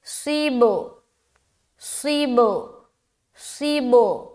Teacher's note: جب آپ صاد کو با سے ملائیں گے تو با کا جو ساؤنڈ ہے وہ ڈبل ڈبل سنائی دے گا